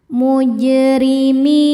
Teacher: Mi hukumnya mad tabi'i dhahiri karena ada ya sukun sebelumnya kasrah. Cara bacanya panjang 2 harokat.